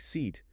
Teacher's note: the final t just disappears. >> It disappears.